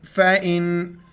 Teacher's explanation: نون ساکن ہے، اخفا مال غنہ کریں گے، ناک میں آواز چھپائیں گے